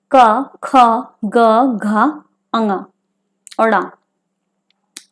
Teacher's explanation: ये कंठ और जीभ की सहायता से बोले जाते हैं, कंठ द्वारा बोले जाते हैं। कंठ व्यंजन यानी कंठ और निचली जीभ के स्पर्श से बोले जाने वाले व्यंजन हैं।